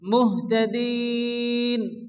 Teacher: আয়াতের শেষে নুন সাকিন হরফে মাদের পরে থামলে আরিস ওয়াকফি চার আলিফ টেনে পড়তে হবে